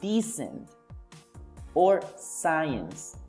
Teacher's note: The k sound is not produced, and instead the s sound is produced.